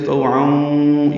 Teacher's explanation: والارض طوعا، تو پر پڑھیں گے، تو واو لین ہے، ہونٹوں کو نا تمام گول کریں گے۔ تنوین کے بعد واو آنے کی وجہ سے طوعاں، یہ ادغام ناقص ہے، غنہ ہوگا۔